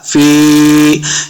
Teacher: मा तरा फी खल्क़िर रहमानी, फी, फा को तलफ़्फ़ुज़ से पढ़ना है, फा जे या फी, या मद्दा हो रहा, यहाँ पे 2 हरकत हमने इसको लंबा करना है। फी खल्क़िर, खल्क़िर, ख और क़ाफ दोनों को मोटा पढ़ना है, दोनों हुरूफ़ मुस्तअलिया से हैं।